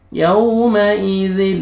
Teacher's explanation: بہم یو واو لین ہے، نرمی سے ادا کریں گے، یومئذ ذل زا نہیں پڑھنا ہے، زال نرمی سے ادا کریں گے